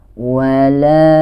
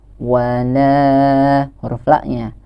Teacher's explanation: Nah, di sini kita bertemu dengan mad tabi'i ini, yaitu huruf la yang berharokat fathah lalu disambung dengan huruf alif. Jadi ini harus dibaca sepanjang 2 harokat.